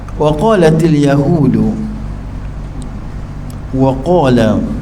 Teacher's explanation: wa sifat dia nipis, qaf sifat dia tebal